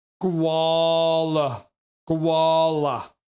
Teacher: The stress is on the first syllable and the G is a hard G.